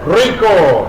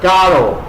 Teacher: Double R rolled, single R tongue forward.